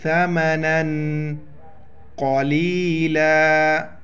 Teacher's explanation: ہے، تنوین ہے، یہاں پر اخفا کریں گے، ساؤنڈ ان نوز، سا کے وقت زبان باہر نکالیں گے